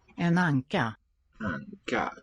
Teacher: Two sinking, sort of falling gestures in the tone.